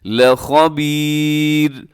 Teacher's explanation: یہاں پر آخر میں را ہے جو کہ باریک پڑھی جائے گی کیونکہ اس سے پہلے یا ساکن ہے. اور وقف میں ویسے تو لخبیرن ہے لیکن وقف میں ہم اس کو ساکن کر دیں گے، لخبیر.